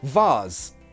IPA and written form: vɑːz (vase)